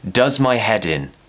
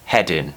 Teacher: we move the D to the beginning of the next word does my head in because the combination of consonant and vowel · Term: connected speech